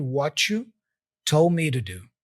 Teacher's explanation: And the two is reduced there from to da.